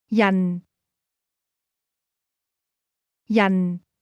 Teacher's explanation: This word is pronounced with a falling tone.